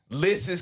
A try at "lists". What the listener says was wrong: One of the lists. It's just lists. It's how you saying it. It's lists. It's not an ES. It's just an S. There's a T in there.